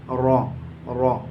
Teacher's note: र का मखरज है जबान की नोक और ऊपर के मसूड़े · را کا مخرج ہے زبان کی نوک اور اوپر کے مسوڑے